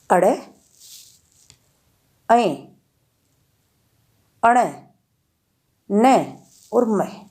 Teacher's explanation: ऐ, अण, न और म व्यंजनों के उच्चारण में हवा नाक से निकलती है, इसलिए इन्हें नासिक के अथवा अनुनासिक व्यंजन कहते हैं।